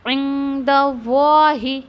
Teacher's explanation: लफ्ज़ुन जलाला का जो लाम है वो हैवी पढ़ा जाएगा